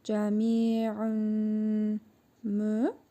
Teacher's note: İdğam-ı məal qunna qaydasına görə tənvindəki nun hərfini burnumuzda tələffüz edərək 1 əlif miqdarı uzadırıq və mim hərfini şəddəli tələffüz edirik.